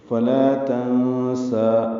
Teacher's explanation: باریک ہے، فلا ملا الف مدہ ہے، 2 حرکات لمبا ہے، تنسا میں نون ساکن کے بعد سین آنے کی وجہ سے اخفا ہے، نون کی آواز چھپائیں گے ، سین کو 2 حرکات لمبا کرنا ہے کھڑا زبر ہونے · سین کو 2 حرکات لمبا کرنا ہے کھڑا زبر ہونے کی وجہ سے وقفاً